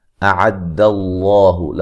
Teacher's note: लफ्ज़ अल्लाह को मोटा अदा करेंगे, उससे पहले हरफ पर ज़बर है